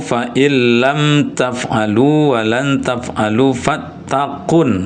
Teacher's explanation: Qun itu tasdid ke huruf nun berarti kunnya dengung.